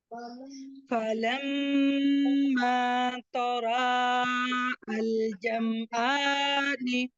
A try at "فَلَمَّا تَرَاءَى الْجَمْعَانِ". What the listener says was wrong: मीम पे गुन्ना कीजिए और गुन्ने की मिकदार को बराबर रखिए और उसके साथ आप यहाँ पर अलिफ को भी पढ़ेंगे, यानी